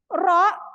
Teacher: ketika harakatnya fathah dia tebal